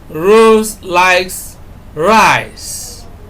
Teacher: when we emphasize rice, we are saying that contrary to what someone else may have suggested, it is not beans that Rose likes, it is rice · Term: contrastive stress